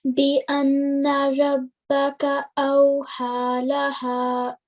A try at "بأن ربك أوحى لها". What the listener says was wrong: That was really nicely recited, and I like the prolongation of every letter, and you prolonged everything really nicely.